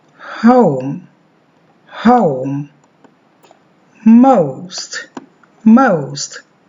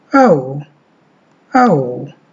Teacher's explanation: There is a schwa at the beginning of this word. The lips may be slightly rounded in anticipation of the glide towards the short vowel oo.